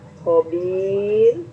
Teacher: dibaca tarkik ya, ya tarkik tipis ya, karena didahului harakat kasroh ya